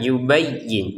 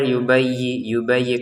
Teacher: Nah, perhatikan ya-nya ditekan, yubayyin. Jangan sekedar yubayyi kan kurang yang seperti itu ya.